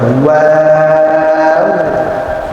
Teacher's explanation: ওয়াও উচ্চারণ করার সময় 2 ঠোঁট গোলাকার করে ওয়াও উচ্চারণ করতে হয়